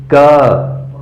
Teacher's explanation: जब क बोलेंगे तो ध्वनि जो है वो आपके कंठ से उच्चारित होगी और पूरा मुंह खुला रहेगा, कंठ से उसका उच्चारण होगा।